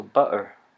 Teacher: some people pronounce butter without the T's but with a glottal in between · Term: the glottal stop